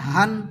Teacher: সিনাহ থেকে আদায় করবে, কোথাও বাজবে না, তার মানে সিনা হইতে সোজা আওয়াজটি আসিবে।